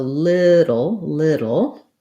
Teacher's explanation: there is usually a little bit of a schwa before that syllabic consonant